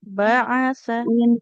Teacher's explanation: Ainnya enggak boleh panjang